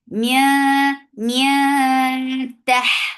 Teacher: This ikhfa is light, so keep the sound in your nose, and you're hiding the sound of noon, and your mouth should be ready to pronounce ta.